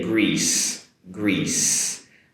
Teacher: Notice the “sss” sound at the end, not the “sh” sound.